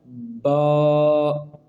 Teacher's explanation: جو دو ہونٹ باہر سے نظر آتے ہیں ان کا جو اندر والا حصہ ہے جب آپس میں ملے گا تو پھر یہ حرف ادا ہوگا